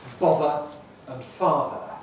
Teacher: the pair of words bother and father now these don't rhyme in any kind of british english